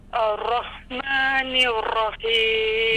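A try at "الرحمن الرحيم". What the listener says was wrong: Jangan getar sangat. Ar-Rahmanir-Rahim.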